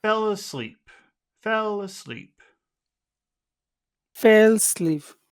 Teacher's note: Let's make this high for the happiness, but we always want to finish our phrase low.